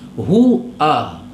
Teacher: Hu dengan u kena ada beza. U bermakna hamzah. Hu ha besar.